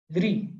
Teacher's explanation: I have to curl my tongue, curl it backwards and slightly touch it to the upper root. So that is retroflex, which is called as Murdhan.